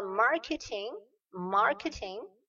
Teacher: Donc, j'élève un petit peu la voix sur marketing